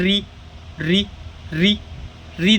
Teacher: एकदम एकदम गले से ऐसे वाइब्रेट हो के मूर्धन्य से आ रहा है · फिर उसके बाद री देखो कहाँ से आ रहा है, री मूर्धन्य से आ रहा है, एकदम गले से वाइब्रेट होके मूर्धन्य से आ रहा है ना। फिर उसके बाद आ रहा है ए, ठीक है, ए आ रहा है, ए कहाँ से आ रहा है, कंठ तालव्य से आ रहा है, कंठ तालव्य से, है ना।